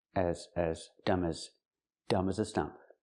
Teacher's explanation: we don't say as with the a sound like black cat. It's more closed. · As is not stressed. It's not an important word. So we don't say as with the ass sound like black cat.